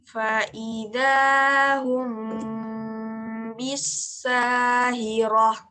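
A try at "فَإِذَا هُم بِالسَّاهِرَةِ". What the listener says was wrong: Iya, seperti itu ya. Jadi ngetemnya benar ya.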